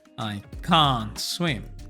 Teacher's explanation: Can't se pronuncia con A larga como vimos previamente y va a sonar fuerte.